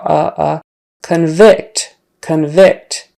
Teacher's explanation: he's been convicted or she and they're a criminal convict convict since the first syllable is not stressed anymore that vowel kind of turns into a schwa